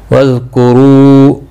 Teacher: رو واو مدہ ہے، ایک الف کے برابر کھینچ کر پڑھیں گے